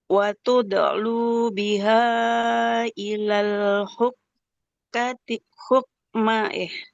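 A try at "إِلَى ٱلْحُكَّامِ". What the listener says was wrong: Hukam. Hukam. Ya, bukan hukmah. Oke, Ibu coba diperhatikan di ilal hukam. Nah, di sini kan fathah. Di depannya ada alif, berarti dibacanya panjang ya. Tadi kelewat di ilal hukam.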